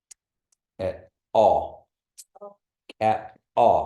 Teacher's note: you got to make that that puff of breath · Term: pop te